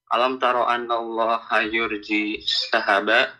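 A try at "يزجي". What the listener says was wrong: Not yurji, yuzji.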